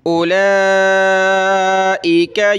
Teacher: اولئک یؤمنون بہ، دیکھیں آپ کو پہلے بتایا کہ اس واو کو ہم نے نہیں پڑھنا، حمزہ کے بعد ڈائریکٹ لام کو پڑھنا ہے، اور لام پہ یہ کھڑا زبر مد ہے تو اس کو ہم نے کھینچنا ہے